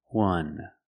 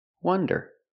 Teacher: And wonder is pronounced with the short U, the sound like cup and up. This is a closed, relaxed sound.